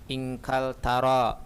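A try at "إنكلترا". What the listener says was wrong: Inkaltara, ada tasdidnya.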